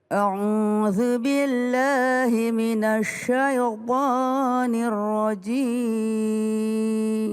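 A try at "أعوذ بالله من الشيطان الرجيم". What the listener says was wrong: Ini banyak terjadi di antara kita kalau bilang sya dimajuin bibirnya. Minasya, salah, keliru. Kalau sya itu tidak maju bibir, jangan minasya.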